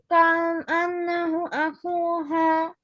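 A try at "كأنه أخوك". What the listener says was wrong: আকু হা, এটা কাফে কি হা হয়? কাআন্নাহু আখুকা, বলো।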